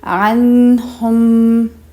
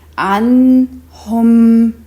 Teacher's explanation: we are not rushing through the sound or bouncing on the Noon or the Meem Sakin. Hold the sound.